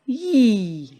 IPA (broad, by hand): j